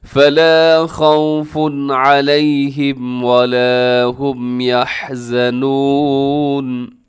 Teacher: پیش والی تنوین، اور آگے علیہم کے شروع میں عین ہے، تنوین کے بعد حروف حلقی آ گیا ہے، یہاں تیزی سے پڑھیے گا، غنہ نہیں کرنا